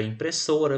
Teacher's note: a sílaba so é a sílaba pronunciada com mais intensidade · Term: sílaba tônica